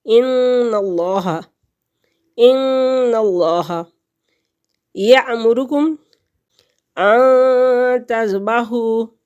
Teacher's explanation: نون ساکن کے بعد حروف خفا میں سے تا آ گیا تو یہاں پر ہم غنہ کریں گے